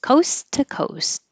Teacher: there's two T's here so you're only going to make one t sound